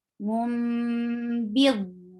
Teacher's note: Ali and there is tanween, and after tanween there is ba. So you will change the sound of tanween into mim. That is called iqlab.